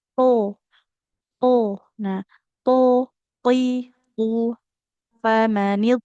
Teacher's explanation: Makhrajnya di ujung lidah menempel ke pangkal gigi.